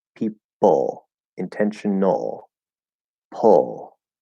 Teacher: don't even try to do the schwa just go straight into that half l